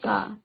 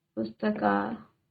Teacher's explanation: अ और आ का मेल आ हो जाएगा क धन आ तो क्या हो जाएगा। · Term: दीर्घ स्वर